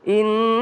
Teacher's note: Inna nun tasydid maka berdengung ya. Makanya tadi baca inna, ditahan dulu.